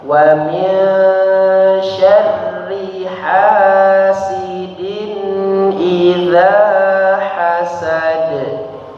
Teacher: dikurangi lagi getarannya, kemudian hasidin langsung disambung.